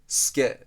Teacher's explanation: since this unvoiced sound follows su, it is devoiced to [sʷ] · in many dialects, including standard Japanese, when the unvoiced i and u sounds are followed by an unvoiced sound, the vowel is devoiced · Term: vowel devoicing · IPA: [s̩ʷke]